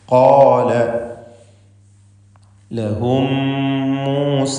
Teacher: സാക്കിനത്ത മീം ശേഷമുള്ള മീമിൽ പൂർണ്ണമായും ലയിപ്പിച്ച് മണിക്കണം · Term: ഇദ്ഗാം ഷഫവി